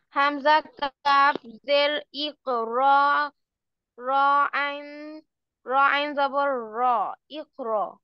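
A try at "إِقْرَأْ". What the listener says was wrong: এটা কি আইন? হামজা কবজের ইক, র হামজা জবর র, র হামজা জবর র, ইক র, ইক র।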